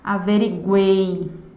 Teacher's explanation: Perceba que a pronúncia do E é uma pronúncia fechada e é a pronúncia que dá base à última sílaba dessa palavra. Portanto, eu vou ter aqui a presença de uma semivogal, mais uma vogal, mais outra semivogal, o que vai dar característica a um tritongo oral, porque a vogal que dá base a essa sílaba, ela é oral.